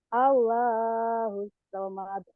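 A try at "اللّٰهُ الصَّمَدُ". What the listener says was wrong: nggak semangat. Itu mah kayak nggak kayak bangun tidur. Allahu samad nyamber.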